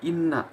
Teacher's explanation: Inna di sini gunnah karena nunnya di situ berharokatkan tasdid